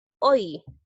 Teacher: ¿Por qué hay diptongo? Porque la Y se pronuncia como vocal. Entonces, al pronunciarla como una vocal, y al unirse con otra vocal abierta se produce el diptongo decreciente, ¿no?